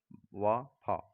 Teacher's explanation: दांतोष्ठ निचले ओठ व ऊपरी दांतों से